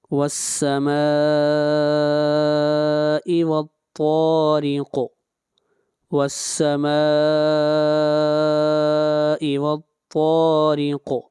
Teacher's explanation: طا حروف مستعلیہ میں سے ہے، طا کو موٹا پڑھیں گے اور قاف کے اوپر قلقلہ ہوگا اور قاف کو موٹا بھی پڑھیں گے